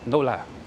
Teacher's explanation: So I could say, no la, but that would sound weird because I'm sort of really stretching out the no, and then I'm stretching out the la, so it's no la.